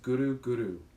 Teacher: you roll the R a little bit. So it sounds like this: Guru, Guru, instead of Guru, Guru.